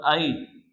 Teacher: اس حمزہ کو ہم ایک الف کی مقدار کھینچ کے پڑھ رہے تھے، اس حمزہ کو ہم جلدی پڑھیں گے، کھینچیں گے نہیں، جھٹکا بھی نہیں دیں گے